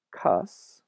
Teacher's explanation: the R was lost when it appeared before an S sound and what's interesting about this is there are some surviving pairs